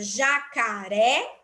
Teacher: então a última é a sílaba mais forte a sílaba tônica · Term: oxítona